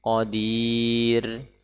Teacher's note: Ketika kita wakaf di sini, maka ro dibaca tipis qadir. Karena sebelumnya huruf yang sukun dan sebelumnya kasrah.